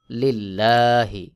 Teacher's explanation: এই লামকে পাতলা করে পড়তে হবে যেমন লিল্লাহি আমি যে লিল্লাহি বললাম এটাকেই বলা হয় বারিক বা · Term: বারিক বা পাতলা